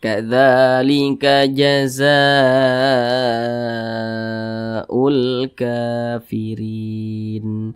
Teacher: Kafirin, rin dibaca panjang. Ini namanya mad arid li sukun. · berjumpa dengan huruf hamzah tapi masih di satu kalimat atau masih di satu kata, maka namanya itu berubah menjadi mad wajib muttasil. Panjangnya itu 5 harokat.